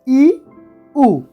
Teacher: যে স্বরধ্বনি উচ্চারণের সময় জীবন এলাকার মধ্যে সর্বোচ্চ স্থানে থাকে এবং জীব ও নিচের চোয়াল যতদূর সম্ভব মুখের ছাদের দিকে এগিয়ে থাকায় মুখের ভেতরে শূন্যতা বা শূন্যস্থান প্রায় ভরে থাকে তাকে সংবৃত স্বরধ্বনি বলে যেমন ই উ এই ই এবং উচ্চারণের